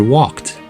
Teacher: With these consonants, the ED ending sounds like a T and does not create a new syllable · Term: T sound